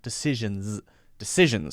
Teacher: that last S in decision is actually a Z sound.